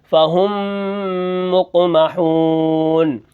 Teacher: میم کے بعد اگر دوسرا میم آ جائے تو ادغام مع الغنہ ہوتا ہے، یعنی غنہ کے ساتھ ہم اس کو پڑھیں گے